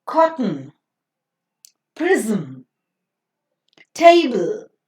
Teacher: these sounds of the consonants are considered to be functioning as the vowel sounds in these examples so they would be considered as a vowel sounds because of